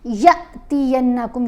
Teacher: یا کو آپ نے جھٹکا دے کر پڑھنا ہے, اس کو آپ لمبا نہیں کرنا کیونکہ الف کے اوپر جزم ہے, یہ حرف مدہ نہیں رہا, یہ حمزہ ہے, تو آپ نے جھٹکا دینا ہے یا کو.